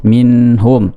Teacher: Kemudian minhum, nun sukun ketemu dengan ha, izhar dibaca jelas, minhum, tidak boleh minhum, tidak boleh.